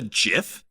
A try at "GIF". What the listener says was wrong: It's a hard G, not a soft G.